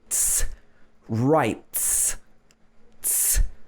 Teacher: if the word ends in a t, also the vocal cords are not moving